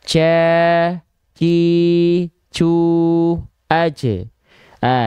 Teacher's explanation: aje ah jadi kalau teman-teman dengarkan dia dia baik-baik tadi itu keluar seperti ada percikan-percikan nafas